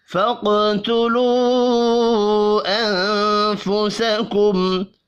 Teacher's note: قاف حروف مستعلیہ ہے، پر پڑا جائے گا، قاف ساکن پر قلقلہ بھی کریں گے. واو کے اوپر چھوٹی مد ہے، 3 الف کے برابر کھینچ کر پڑھنا ہے.